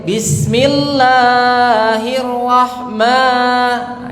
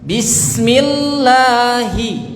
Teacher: itu kepanjangan ya satu ayunan saja atau dua ketukan